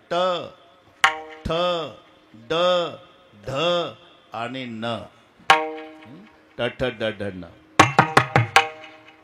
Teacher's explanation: मारेल हे दंते आहे तथ दध न करून पहा बस दंते टालव्य वरच्या टाळूला जीभ लागल्याशिवाय उच्चार होत नाही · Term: मूर्धन्य